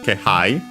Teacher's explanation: Instead of being unaccented, like most of those, it's accented on the first syllable